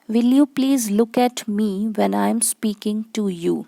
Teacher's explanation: So here O sound is very prominent in you, look, to and you. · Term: Assonance